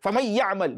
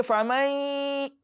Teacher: But when you say faman, so you taking your time on that nun sākinah will naturally bring about that gunna, that sound that comes from your nostril, which is one of the properties of known as sākinah, that is retained in that recitation.